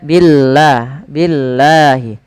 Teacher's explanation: dan lafal Allah kita panjangkan sepanjang dua harakat